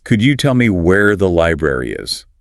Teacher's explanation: there's a stress on library because that's the key information.